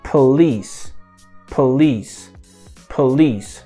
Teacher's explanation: Ou seja, o P é a sílaba átona. Então, o schwa vai aparecer lá.